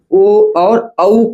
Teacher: ओ और औ का उच्चारण स्थान कहां से होता है? तो कंठ ओष्ठ से होता है।